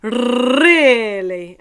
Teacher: it's a big long rolled R and we're just saying really